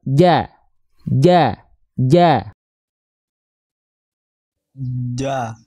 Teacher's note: Jim itu sifatnya jahr jadi dia dilafalkan tidak mengeluarkan percikan nafas